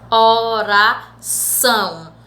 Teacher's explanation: Esse são, ele é pronunciado com maior tonicidade, com a maior força. Então, o são é a sílaba tônica da palavra.